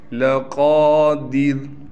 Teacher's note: रज्इही लक़ादिर, क़ाफ़ को मोटा भी पढ़ना है, क़ाफ़ के बाद अलिफ़ होने की वजह से क़ाफ़ को एक अलिफ की मिक़दार खींचेंगे